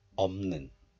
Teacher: The siot of the double final consonant piup siot is just dropped, so only piup remains. And this piup is followed by the nasal consonant niun of the next letter.